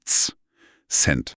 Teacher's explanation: Bei Cent, der kleinen Münze, klingt das C wie ein Z. Wir haben vorhin über das Z gesprochen. Es ist diese harte T- und S-Kombination.